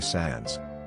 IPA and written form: sænz (Sans)